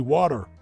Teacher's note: It's usually water with like a D instead of a T.